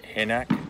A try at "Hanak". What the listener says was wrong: I think the H is silent.